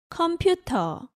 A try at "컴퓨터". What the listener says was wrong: Again, there is no R sound in Korean, so in Korean you say 컴퓨터 without the R at the end.